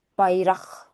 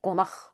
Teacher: sonda gələn q x kimi tələffüz olunur